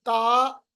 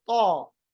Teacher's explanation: मैं होठों को गोल करता हूं। इससे हमारे पास ता और तो में फर्क आ जाता है।